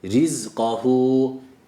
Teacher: ra ince tam i sesiyle